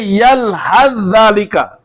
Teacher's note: سا کو زال میں ادغام کرتے ہیں